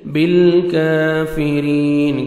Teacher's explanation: یا مد ہے، 1 سیکنڈ را کو کھینچنا ہے اور را کو باریک پڑھنا ہے، را کے نیچے زیر ہے · محیط، یا مد ہے، 1 سیکنڈ ہا کو کھینچنا ہے، تنوین کے بعد باہر ہے، تنوین کے نون کو میم میں چینج کریں گے. بالکافرین، کاف کو باریک پڑھنا ہے، 1 سیکنڈ کھینچنا ہے، کھڑے زبر ہے.